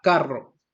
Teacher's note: el rasgo vibrante, en el cual el aire hace vibrar la punta de la lengua al pasar, como la letra R.